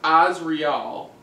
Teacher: With the emphasis on the first syllable.